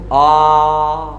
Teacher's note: जिह्वा है ये तालु के पश्च भाग को स्पर्श कर जाती है तो मुंह आगे से पूरा का पूरा ही खुल जाता है। देखो आ, तो पूरा का पूरा ही खुल गया। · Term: विवृत स्वर